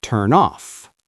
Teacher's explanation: Turn ends with N. Off starts with O, so I move the N.